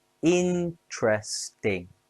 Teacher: interesting has three syllables stress on in.